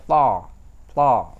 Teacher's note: Jadi ujung lidah di gigi atas sama mirip dengan dengan sa, tapi dia lebih tebal ya.